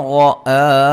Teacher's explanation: اور را کو موٹا ادا کریں گے